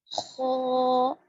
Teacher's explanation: مخارج سنیے, مخارج پر غور کیجیے. خو, موٹا پڑھے جانے والا حرف ہے, گلے کے اوپر والے حصے سے ادا ہوگا